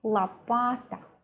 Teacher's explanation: The first syllable has sound O, but it is not stressed. We pronounce it as la.